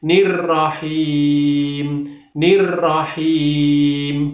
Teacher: him itu ada ya mati didahului dengan kasroh, maka cara membacanya harus dua ketok. Ar-Rahmanir-Rahim, nirrahim, nirrahim, nirrahim, dua ketok.